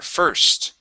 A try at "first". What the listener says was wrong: Okay, make sure to get that S and the T.